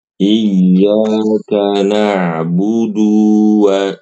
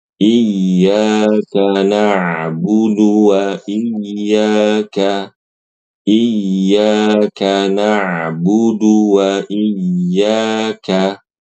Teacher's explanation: kesalahannya Ibu ketika membaca na'budu, du-nya itu dipanjangin